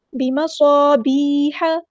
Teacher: ہا کی زبر کو لمبا نہیں کرنا. صاد میں سیٹی آئے گی.